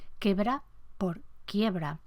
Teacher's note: vocales simples donde el estándar tiene un diptongo